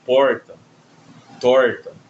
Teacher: Esse é um R retroflexo, que é a língua fazendo, dando uma encaracolada, né? E aí a língua se aproxima dessa parte de trás dos dentes ainda no no céu da boca.